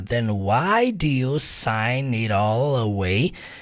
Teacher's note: Você pode juntar o sign com it all também.